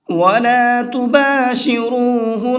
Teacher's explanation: نون کے اوپر تشدید ہے تو یہاں پر غنہ کریں گے